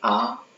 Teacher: जिन स्वरों के उच्चारण में पूरा मुंह खुला रहता है, जैसे कि आ। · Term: विव्रत स्वर